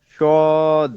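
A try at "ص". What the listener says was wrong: সদ হবে হচ্ছে সিন থেকে, সদ হবে সিন থেকে, সদ। একই উচ্চারণ হবে, খালি জাস্ট মোটা হবে। সদ। হচ্ছে শিন। না ওইটা থেকে না, তার আগেরটা,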